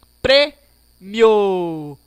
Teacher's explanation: O O sai bem grande no final. O Mi sai bem pequeno. Prêmio. Então, nesse caso, o O é a vogal e o I, semivogal.